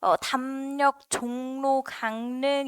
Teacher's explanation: 미음이라는 비음 뒤에 리을이 와서 이 리을이 니은으로 바뀌는 리을 비음화가 일어날 거야. 기 때문에 담력을 담력으로 발음을 하겠네.